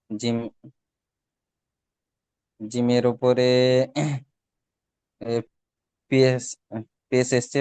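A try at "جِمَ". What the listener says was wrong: জিমের উপরে পেশ না, এটা জিমের উপরে এটা হলো সাকিন।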